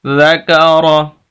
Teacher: کاف بریک ہے اور را کے اوپر زبر ہے، اس وجہ سے را کو موٹا پڑھیں گے